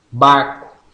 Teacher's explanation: Oral oclusiva bilabial sonora